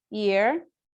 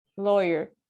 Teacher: it's a voice sound, it's a glide, and also the place of articulation is palatal